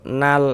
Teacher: Karena cara membaca huruf lamnya itu dibaca izhar, izhar qamari. Ah, maksud yang dibaca izhar itu dia dibaca jelas, terbaca huruf lamnya gitu